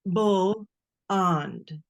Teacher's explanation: if they've been taught letter sounds with that schwa, they'll say, for example, the word blonde. They'll say bull on, as though it were a 2-syllable word.